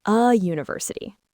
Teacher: It starts with the letter U, a vowel, but we say a university >> because the first sound is U. Like the word U. That Y sound is a consonant sound. So it gets a.